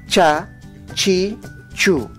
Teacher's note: En el achajala o alfabeto quechua no existe la letra C, solo el dígrafo CH, para representar el sonido oclusivo palatal